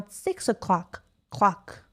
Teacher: رو clock من بیشتر استرس میذارم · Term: sentence stress